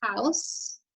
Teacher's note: The O-U on its own is making that ow sound, and you don't hear a long O or a long U.